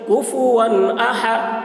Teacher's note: कुफुवन अ, हा ज़बर हा, हा के ऊपर ज़बर है, ज़बर को जल्दी पढ़ें, थोड़ा भी ना खींचें